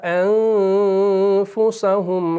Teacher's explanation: نون ساکن کے بعد فا آ گیا اور فا آپ کا مرقق ہے، اس لیے یہاں پر جو آپ کا اخفا ہو گیا وہ آپ کا لائٹ اخفا ہوا